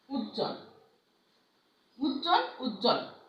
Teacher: যুক্ত ব্যঞ্জনের ব ফলা অনুচ্চারিত থাকে